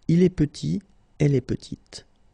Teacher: Final T is not pronounced, and then when you add this E at the end, you get the sound T